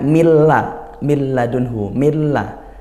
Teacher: milla itu kalau kita dengar tidak ada bunyi nunnya, milla. Nah, tapi sebenarnya tertulis minla gitu ya. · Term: idgham